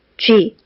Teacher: 쥐 할 때 입술 모양이 변하면서 위라고 하는 모음이 발음이 됐거든요